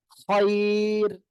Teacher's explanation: ওয়াকফের কারণে র হরফে সাকিন, তার ডাইনে ইয়া সাকিন, ঠিক আছে, হইলে র হরফ চিকুন করে পড়তে হবে।